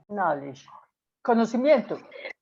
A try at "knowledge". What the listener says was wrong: Exactly, exactly. Well done, great.